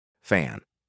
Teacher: Upper teeth rest lightly on the inner lower lip. Blow a continuous steady stream of air through the gap. No voice.